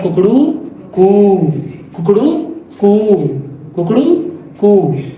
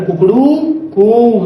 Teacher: तो देखो प्लुस्तर का प्रयोग कर रहा है वो, कुकड़ू कू, तो मात्रा को खींच रहा है